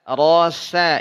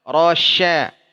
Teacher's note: ro tafkhim tebal tapi tidak monyong